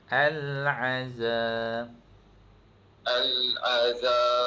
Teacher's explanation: Za tu panjang sikit dua harakat.